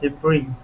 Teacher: the S is going to be silent at the end, and the accent is on the I